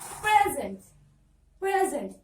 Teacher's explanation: if it is a noun, you have to stress on syllable number 1